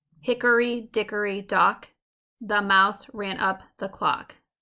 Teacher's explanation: a 3-syllable foot with a stressed syllable coming first, the mirrored image of the anapest. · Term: dactyl